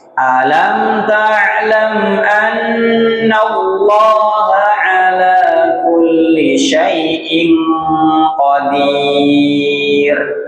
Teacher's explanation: Alam ainnya dinaikkan ke tenggorokan tengah. Ain sama ha tenggorokan tengah, bukan alam ta'lam, tapi ditekan dinaikkan ke tenggorokan tengah.